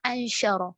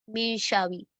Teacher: ہم نون کے مخرج کو ٹچ بھی نہیں کریں گے اور نہ ہی ٹھہرائیں گے اپنی زبان کو نون کے مخرج پر، کیونکہ یہ اخفا ہے.